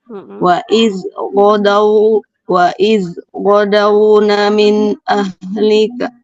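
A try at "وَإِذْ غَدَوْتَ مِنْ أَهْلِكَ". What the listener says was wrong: Bukan ghadawna. Huruf apa ini, Bu? Huruf ta. Ghadawta.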